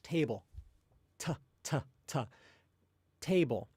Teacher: you should notice that the tip of your tongue touches the back of your alveolar ridge. So kind of like that kind of bump just behind your upper front teeth. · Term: English T sounds